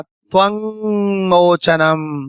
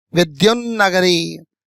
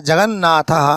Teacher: पंचम वर्ण नासिका से बोलेंगे मित्रों, ध्यान रखना, जब बोलते हैं तो नासिका पर कंपन होता है